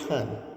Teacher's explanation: Aspiration, the emission of a puff of breath which follows the building up and release of air pressure in the making of a sound. In English, the P is aspirated at the beginning of the word pan.